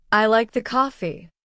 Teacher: His voice would rise slightly on like and fall naturally on coffee. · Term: natural intonation